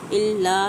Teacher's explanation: لا پہ الف مدہ، 1 سے 2 حرکات کھینچ کے پڑھیں گے